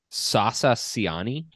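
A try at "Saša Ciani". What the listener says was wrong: Sasha. Sasa? It's Sasha. S. The accent mark on the S makes an H sound.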